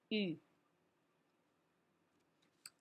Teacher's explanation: No glides here, so we do oo position with our lips, and then our tongue is going to say E. So first we have lip position, U. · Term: mixed vowels